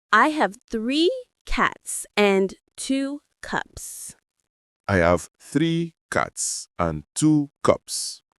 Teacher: Notice how cats and cups end with a clean S sound, no extra syllable. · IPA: /s/